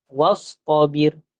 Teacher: alif tu kita tak baca wa'astabir. Sebab itu dia hamzah wasal. Jadi kalau kita nak baca, dia kena baca daripada wastabir terus masuk ke sad.